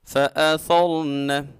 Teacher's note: حمزہ کو خوب واضح کر کے سختی سے ادا کریں گے، اور ثا میں سٹی پیدا نہیں کرنی۔ جب بھی ثا کو ادا کرنا ہے اپنی زبان کی نوک، جو سامنے بڑے 2 دانت ہیں اوپر والے، ان کی نوک کے ساتھ لگائیں گے، اور جب را ساکن ہو اور اس سے پہلے والے حرف کے اوپر زبر آ جائے تو را کو موٹا پڑا جاتا ہے۔